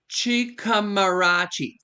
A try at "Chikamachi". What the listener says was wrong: No, no R. Chikamarachi. Chikamachi. Yeah, there's no R after the M-A, so it's Chikamachi.